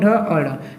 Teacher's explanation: बोलते हैं ना जब ट ठ ड को, तो हमारा जीभ क्या होता है, मुड़ जाता है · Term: मूर्धन्य